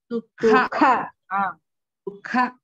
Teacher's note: Sukha, in kha mahaprana is there